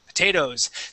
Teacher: We go from that O sound to a Z sound.